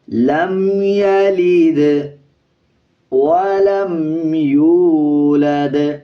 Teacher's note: لام کے بعد جو میم ہے اس کے اوپر غنہ نہیں کرنا